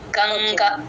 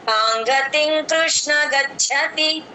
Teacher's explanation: ఎం పెట్టము ఎన్ పెట్టము అంగ్ sound లాగా వస్తుంది